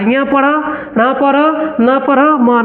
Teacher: ये पूरा का पूरा ध्वनि निकल रहा है नासिका नासिका मतलब नाक होता है और नाक से निकल रहा है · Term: अनुनासिक व्यंजन